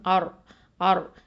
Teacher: அடுத்தது ஹம்சா ஃபத்ஹா, ரா சுக்கூன், ஆர் ஆர். இந்த ரா வந்து ஹெவியாக தான் உச்சரிக்கணும், தஃப்ஹீம்.